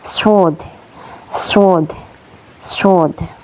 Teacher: tempat keluarnya yaitu dari ujung lidah saat menyentuh dinding bagian dalam gigi seri bawah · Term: huruf sod